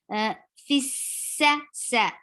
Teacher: And sin will get sufis, sin will get rukhawa, and there should be a whistle sound, there should be a flow of sound.